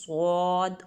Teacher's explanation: پورے منہ میں اس کی آواز گونجتی ہے اور اس کے پورے منہ سے آواز نکلتی ہے، صاد، اور موٹا کر کے پڑھا جاتا ہے اس کو، ٹھیک ہے۔